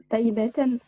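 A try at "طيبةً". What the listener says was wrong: Laïset taïbatan. Voilà, ok, c'est bien.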